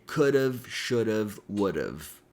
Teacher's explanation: we can connect could and have with the flap T or fast D sound · Now remember I mentioned that the word have can be fully pronounced as have, or we can reduce it by eliminating the H sound and changing the A sound to a schwa